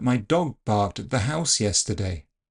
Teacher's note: far more striking in my opinion, were my plosive consonants. They were all unaspirated.